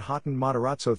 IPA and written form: ˈɡeɪtən ˌmætəˈræzoʊ (Gaten Matarazzo)